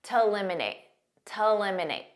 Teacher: a lot of native speakers will pronounce to when it's a preposition or part of the infinitive like it is here as a very unstressed T